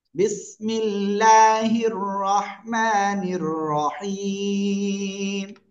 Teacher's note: আল্লাহ শব্দের লামের ডাইনে যদি জের আসে চিকন করে লা বলতে হয়